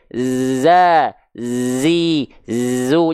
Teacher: berdesis Oh emang Z berdesis ya Bang iya desisannya seperti lebah Z harus ada desisannya jangan sampai malah jadi kayak huruf s huruf Sin